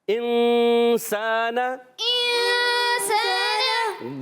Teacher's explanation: नाक में आवाज लेकर जाते हैं और फिर इस गुन्ने को अदा करते हैं। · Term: इफा के गुन्ने